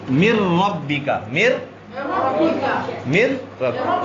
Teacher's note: پھر ان میں اگر لام اور را ہوں، لام اور را یہ دو حروف آ جائیں تو اس میں ادغام ہوگا بغیر غنہ، اس میں ادغام ہوگا بلا غنہ.